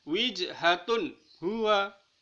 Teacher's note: Tapi wijhatun huwa secara jelas karena dhammatain bertemu dengan huruf izhar.